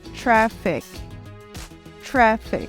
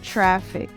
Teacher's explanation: o som da letra A também é um som de vogal no meio do caminho entre o som da letra A e o som da letra E aberta